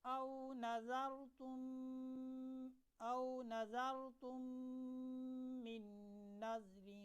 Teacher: دیکھیں نظرتم میں میم ساکن ہے، من میں جو میم ہے یہ متحرک ہے، اس کے نیچے زیر ہے، تو پہلی میم کو دوسری میم میں ملائیں گے اور ملانے کے ساتھ ساتھ ہم نے غنہ بھی کرنا ہے